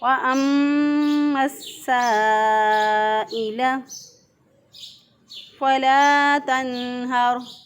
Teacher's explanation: یہاں پہ حروف مدہ کے بعد حمزہ اسی کلمے کے اندر آ گیا، تو یہاں پہ اس کو مد کریں گے، 3 الف کے برابر اس کو لمبا کر کے کھینچ کے پڑھیں گے